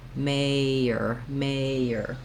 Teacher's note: i don't have any pushed out sound like the j in it so i just glide from my vowel into my um tight back er sound · i'm moving from the a position to the er position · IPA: /ˈmeɪər/